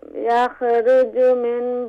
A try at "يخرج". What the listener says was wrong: Kha, don't do qalqala on the kha. Control yakha. Yakha, no. يخرج.